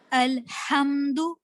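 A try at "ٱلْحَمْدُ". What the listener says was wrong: हाँ, और सिर्फ हा बोलिए, नॉर्मल हा। हाँ, ये छोटी हा है। अल्हम्दु बड़ी हा।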